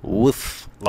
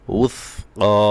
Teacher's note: উস ক বলার সময় সা জিব্বার আগা দিয়ে হবে এবং কফ গলায় যাবে, একটু কঠিন, ভালো করে খেয়াল করে পড়বেন।